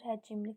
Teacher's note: Həcimli yazılır, həcimli tələffüz olunur. Arasına i qapalı sait əlavə olunur. Bir açıq, bir qapalı sait var.